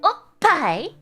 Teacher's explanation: Make sure you hold back at oh and then let it out loud at pai. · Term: tiny tsu